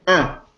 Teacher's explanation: because French doesn't like final consonant, this n is no longer pronounced in French. But it is still present because it nasalizes the preceding vowel. · But it is still present because it nasalizes the preceding vowel. This is why we say un with a nasal feature